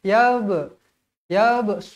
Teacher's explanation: huruf ba Qalqalah Sura dibaca melantun